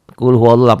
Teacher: dibaca tebal tafkhim bunyi o Kenapa karena sebelum lafadz Allah ada huruf yang berbaris Fattah ya · lafaz Allahnya dibaca tebal, tafkhim bunyi O